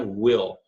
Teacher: aquele dark L lá que eu já falei, fundo da garganta